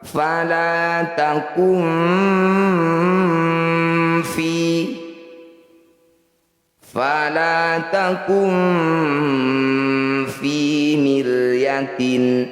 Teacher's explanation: Cara bacanya bunyi nun sukun dengungkan 2 harokat. Saat mendengung lisan kita sudah ada di huruf fa. Bersiap bunyikan huruf fa. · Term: ikhfa awsat